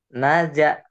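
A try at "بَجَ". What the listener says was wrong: Ais terbalik, Naja. Titiknya di bawah. Baja.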